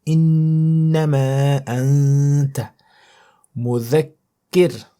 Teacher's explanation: the ra at the end, you silence it and you pronounce it with a small mouth. Kir, small mouth.